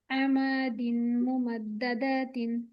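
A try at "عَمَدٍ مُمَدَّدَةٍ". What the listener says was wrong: আমাদিন, গুণাটা একটু সুন্দর হবে।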